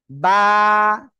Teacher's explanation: দুই ঠোঁটের ভিজা অংশ থেকে বা এক আলিফ টেনে পড়তে হবে